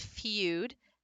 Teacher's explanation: The difference with the feud is that you have that long U with that slight y, and it's glided. That Y makes that part like almost a partial glide.